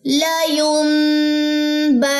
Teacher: نون کی زبر بھی لمبی نہیں کرنی